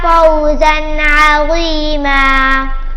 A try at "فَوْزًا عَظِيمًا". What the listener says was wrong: فوزا عظیما، عین کی آواز ہلے گی نہیں. فوزا عظیما.